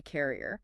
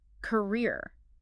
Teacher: The second syllable holds all the weight.